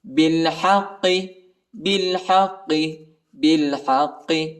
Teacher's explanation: با کو لام کے ساتھ ملائیں گے، الف نہیں پڑھا جاتا، الف کے اوپر حرکت نہیں ہے، اور حا کو قاف کے ساتھ ملائیں گے، ٹھیک ہے.